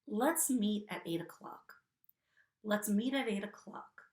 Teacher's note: there's a flapped T in meet, at, and 8 because these words end in the T sound, but the next sound is a vowel, which is now creating the environment that this T is between 2 vowels, creating the environment for an American English flapped T.